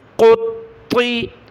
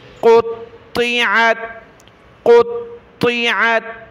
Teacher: قاف اور طا دونوں کو موٹا کریں